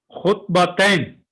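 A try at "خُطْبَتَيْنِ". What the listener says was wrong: تین نہیں، پوری حرکت پڑھیں سر. خطبہ. خطبہ. تئی کے بعد کیا ہے؟ نین. خطبتین نین. پورا ساؤنڈ بڑا کریں. لیکن جب تک آپ گرامر کو سیکھ رہے ہیں نا تو کوشش کریں حرکت پوری پڑھا کریں. حرکت پوری پڑھیں گے تو انشاءاللہ تعالیٰ آپ کے لیے اعراب آسان ہوتا چلا جائے گا.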